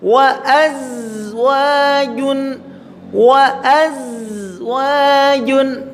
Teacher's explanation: makhrajnya ujung lidah dengan rongga antara gigi atas dan gigi bawah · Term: huruf zai